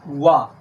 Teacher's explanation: वा का उच्चारण स्थान दंतोष्ठ होता है, क्योंकि वा को बोलने में हम दांत के साथ साथ होठ को भी आपस में स्पर्श करते हैं।